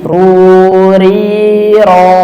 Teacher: Dia dhammah dan fathah tebal. Pengucapannya tebal, ketika kasrah dia tipis. Pangkal lidahnya dinaikkan sehingga suara tersebut menjadikan dia tebal. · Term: huruf ra